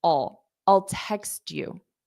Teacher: a very unstressed all so it sounds like a dark L